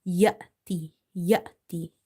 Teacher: sukoon sign on top of Hamza, you have to give it a sudden pause. Ya'ti, ya'ti.